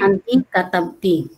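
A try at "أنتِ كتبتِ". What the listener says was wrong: Ya, ahsanti. Ya, seperti itu, ya.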